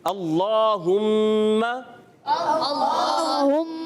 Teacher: کی ادائیگی کلیئر کرنی ہے، اور پھر اللہم اس میں بھی اللہ پاک کا لام ہے اور اس سے پہلے زبر ہے تو یہ پر ہو جائے گا، موٹا کر کے پڑھیں گے اللہم، اور کھڑا زبر ہے، ایک الف کھینچنا بھی ہے، اللہم،